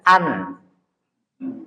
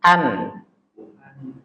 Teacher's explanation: nun sukun atau tanwin kan dari ujung lidah